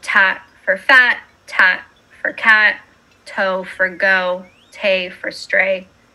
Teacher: the collapsing of phonemes to t in the initial word position